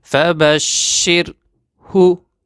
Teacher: But this Ra has light sound because Ra has sukun and previous letter has kasra.